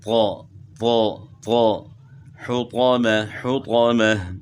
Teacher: طوا کو کس طرح موٹا کریں گے کہ تا کی آواز آپ نے موٹی کرنی ہے، اور موٹی کس طرح کرنی ہے کہ زبان تالو کی طرف اٹھائیں گے، اور ہونٹ نہیں گول کریں گے، یعنی ہونٹ گول کر کے جو توا پڑھتے ہیں وہ غلط ہے، وہ مثلا کہ حرف ادا نہیں ہوا، تو اس کو تا کو آپ موٹا کریں گے اور زبان کو تالو کی طرف اٹھائیں گے، تو پھر اس کو آپ صحیح پڑھ سکیں گے، طو طو طو، حطامہ حطامہ۔